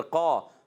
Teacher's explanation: الف مدہ ایک الف کھینچنا ہے، قاف کو موٹا رکھنا ہے. اور قاف کے بعد جو الف آ رہا ہے اس کو بھی موٹا کر کے پڑھیں گے، ٹھیک ہے.